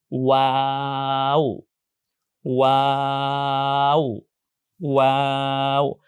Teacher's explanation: আর খেয়াল রাখতে হবে, ওয়াও বলার সময় শুরুতে ঠোঁটটা গোল হয়, পরে ঠোঁট স্বাভাবিক হয়ে যায়, এরপর আবার ঠোঁট গোল করতে হয়।